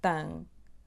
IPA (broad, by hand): tɐ̃